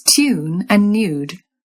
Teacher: In RP, you'll stick in a y sound after T, D, and N.